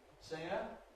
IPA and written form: ˈsɪŋə (singer)